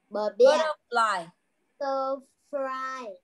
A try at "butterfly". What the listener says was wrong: Now fly, not fry. Fly, fly. Butterfly.